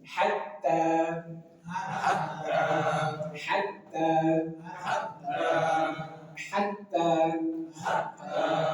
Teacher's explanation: huruf ha dari tengah tenggorokan · Hatta ada ta bertasydid pastikan ada nabr penekanan hatta dan dia madobii dibaca dua harakat hatta.